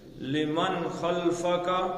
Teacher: اظہار ہے، کیونکہ آگے خا آ گیا وہ ہلکی ہے